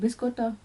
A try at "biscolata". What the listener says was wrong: There's an L in it! It's biscolata. Biscolata.